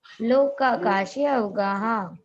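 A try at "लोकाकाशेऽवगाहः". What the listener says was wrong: लोकाकाशे, देखो आ नहीं बोल रहे, लोकाकाशे अब जब इसका विच्छेद करेंगे, संधि विच्छेद करेंगे तो हो जाएगा लोकाकाशे अवगाहा, लोकाकाशे अवगाहा।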